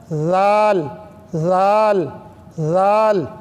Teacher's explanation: زال کے لیے زبان تھوڑی سی باہر نکالیں، زال، اور چاہیں تو یہ انگلی رکھیں دونوں ہونٹوں پر اور زبان نکل کر کے یہ انگلی کو چومیں تو جان لیجئے کہ آپ کے زال جو ہے برابر ادا ہو رہی ہے۔